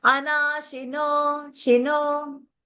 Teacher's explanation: So don't say she, no. Don't stress on that she. Keep it short.